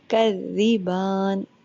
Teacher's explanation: با کے اوپر کھڑا زبر ہے، اس کو آپ لمبا کریں 2 سیکنڈ، 3 سیکنڈ. آخری مقدار اس کی 6 سیکنڈ ہے.